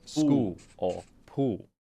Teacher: in south of Australia they might drop the L entirely